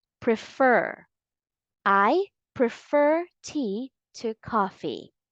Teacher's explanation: keep on trying and stress the second syllable